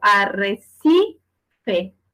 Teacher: es un ejemplo de palabra grave que tiene su sílaba tónica en la penúltima sílaba y tampoco se acentúa porque las graves me dice que para acentuarse tienen que terminar en N, S o vocal.